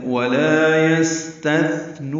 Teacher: واو ہونٹ کی نا تمام گلائی سے ادا کریں گے